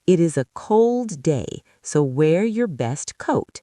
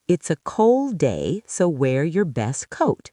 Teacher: Notice how cold becomes coal and best becomes bess. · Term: dropped sounds